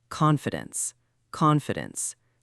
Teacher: Stress on the first syllable, con fi dence, not con fi dence.